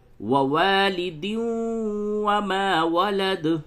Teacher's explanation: اور را میں ادغام بلا غنہ کرتے ہیں۔ تو یہاں پہ یا واو میم نون میں سے واو آیا تو یہاں پہ ادغام مع الغنہ ہوگا